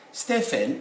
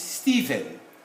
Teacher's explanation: this ph these two would sound as v